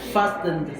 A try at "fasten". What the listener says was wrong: No. Fasten. You're not silenting.